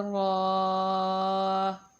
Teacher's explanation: را زبر کے ساتھ پر کر کے، نیکسٹ را پیش کے ساتھ اس کو بھی ہم پر کر کے پڑھیں گے۔